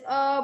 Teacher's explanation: जैसे अ बोला है, आपका गले से उत्पन्न होता है। सो गले से ये ध्वनि उत्पन्न की जाती है। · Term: गटरल